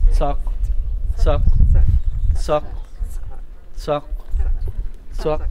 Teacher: it's the TS. It's just ejective. It's extra hard.